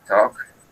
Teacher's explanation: la A parece una O, y la L aquí también es muda